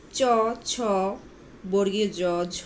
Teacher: এই ধ্বনিগুলোর উচ্চারণকালে জিহবা বা তালুর স্পর্শের পর পরেই উভয়ের মধ্যে বায়ুর ঘর্ষণজাত ধ্বনি সৃষ্টি হয় বলে এগুলোকে ঘৃষ্ট ধ্বনি বলে এই ধ্বনিগুলো উচ্চারণের সময় বাতাস প্রথমে স্পৃষ্ট ধ্বনির মত মুখের মধ্যে